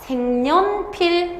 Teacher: 색연필이 아니라 생년필, 그 다음 불려우, 식용유라고 해서 없었던 니은이 들어간다고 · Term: 니은 첨가